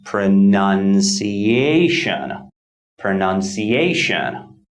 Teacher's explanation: word pronunciation has 1 2 3 4 and five five syllables the primary stress falls on the fourth syllable a and the secondary stress falls on the second syllable none